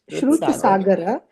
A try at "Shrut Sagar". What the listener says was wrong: remember I said the A at the end is not to be pronounced as A. So it's just Shrut Sagar, not Shrut Sagara.